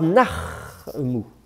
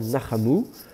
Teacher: le chet n'aime pas non plus le shfa mobile, donc on va colorer le shfa. Donc vous avez la forme nachamu.